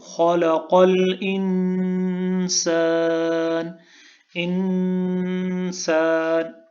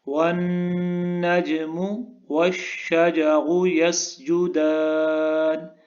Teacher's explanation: نون کے اوپر غنہ ہے، آواز کو ناک میں لے کے جائیں گے۔